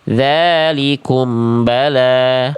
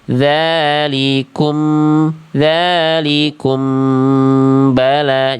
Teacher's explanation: Jadi m-nya dapat dua ketuk dulu di situ.